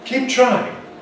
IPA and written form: ˈkiːp ˈtraɪɪŋ (keep trying)